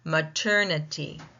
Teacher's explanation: The mater requires louder, longer, and more fully pronounced or clearly pronounced syllable.